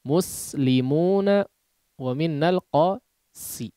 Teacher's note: Maka diperhatikan pengucapan huruf sinnya tipis tajam.